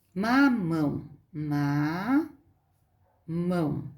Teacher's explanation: é a última sílaba é a forte oxítona